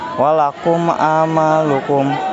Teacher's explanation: mim mati atau sukun bertemu dengan huruf Ain dibaca terang di bibir dengan mulut tertutup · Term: izhar syafawi